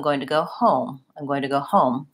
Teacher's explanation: The rest of this is fast, and then home is stretched out.